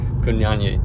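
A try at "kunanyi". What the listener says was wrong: You're putting two Y's into it, and there's only one.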